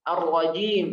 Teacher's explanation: ra juga harf ra tafkhim, ya, karena ra-nya berharakat fathah maka harus tebal juga